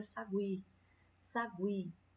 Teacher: a vogal que está tendo o sonzinho mais acentuado é o I, então o I é a vogal e o U vai ser a semivogal